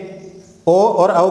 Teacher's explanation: ओ और औ का उच्चारण स्थान क्या होता है? कंठ ओष्ठ होता है।